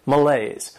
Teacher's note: and the stress is on that second syllable